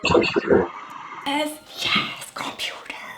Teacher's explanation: Okay, stress on the second syllable.